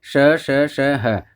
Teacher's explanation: ऊषम वर्ण, ऊषम वर्ण है श श श ह। ऊषम इसलिए है कि जब इनको बोलते हैं श श श ह तो अंदर से गर्म ऊष्म गर्म हवा निकलती है, गर्म श्वास के साथ हम बोलते हैं, तो ऊषम इसको बोला गया है।